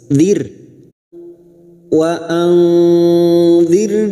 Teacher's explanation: ro sukun yang didahului kasrah kita baca tarqik atau tipis